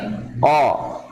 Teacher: Pangkal lidah menyentuh langit-langit. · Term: qalqalah